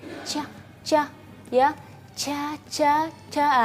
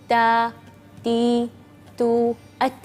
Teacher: huruf ta itu dia dari ujung pinggir lidah ini, jadi melafalkannya ta tipis ya.